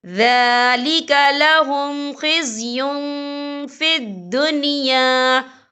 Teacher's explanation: أَوْ يُنْفَوْا مِنَ الْأَرْضِ ذَلِكَ لَهُمْ خِزْيٌ فِي الدُّنْيَا، یہ دیکھیں ذَلِكَ لَهُمْ خِزْيٌ، یا کے پر تنوین ہے، تنوین کے بعد جو ہے فا آ رہا ہے، اور فا جو ہے اکفا کا ورڈ ہے، تو ہم یہاں اکفا کریں گے، تنوین کی آواز کو ناک میں چھپائیں گے۔